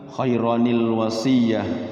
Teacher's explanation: depannya Alif itu pasti tanwinnya hilang timbul Nun kecil